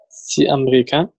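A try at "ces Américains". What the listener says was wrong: سي، لا سيز امريكان، الاكس كانه تحول لزد. اوكي احنا عندنا هنا، اوكي عندنا كانك هتنطقها بالطريقه دي، كانك دي لوحدها وزوروبيان كانها تبتدي بالزد. هننطقها بالطريقة دي، دي لوحدها مفيش الاس بعد ما يتنطقش فيها، الاس تحول لزد وابتدى في الكلمة التانية.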